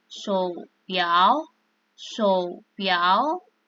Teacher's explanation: kalau nada 3 bertemu dengan nada 3, maka nada 3 berubah jadi nada 2. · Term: perubahan nada